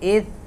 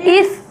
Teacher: اس یہ سین کی آواز نہیں آئے گی، نرم پڑھیں گے، فا اس کی آواز نرم ہوگی، اور اس میں سیٹی نہیں ہے۔